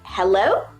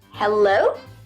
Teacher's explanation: hello like with a question intonation